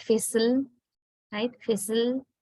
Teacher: Fizzle, no vowels. The word ends with l, which is a lateral or liquid, right? So there we say, we identify l has a syllabic function, although l is not a vowel sound.